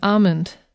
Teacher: the l in almond in in most american dialects is not pronounced